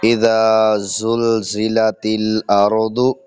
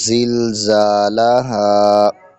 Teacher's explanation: اذا ذال کو بالکل نرمی کے ساتھ ادا کریں گے، تو جب زا کی باری آئے تو زا کو سختی کے ساتھ ادا کریں گے